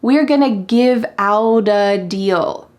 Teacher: Out and a are linked together, but then the T changes to a D sound. In American English, this is extremely common that when there's a T with a vowel on either side, the T changes to a D.